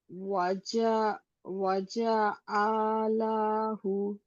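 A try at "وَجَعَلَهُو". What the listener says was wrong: হুতে টান হবে, ওয়াও আছে ছোট্ট করে, এই যে এটা এগুলো সব।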